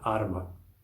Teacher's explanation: Como a primeira sílaba termina numa consoante, em R, isso já torna ela longa. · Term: sílabas longas